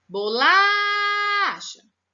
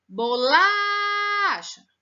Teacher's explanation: nessa palavrinha, esticou mais o som do lá. Então, o lá é a sílaba tônica